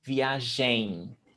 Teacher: In Portuguese, we don't pronounce the M at the end of words. Never. We turn it into a nasal sound.